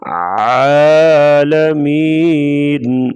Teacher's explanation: عین کی آواز گلے سے نکالیں گے واضح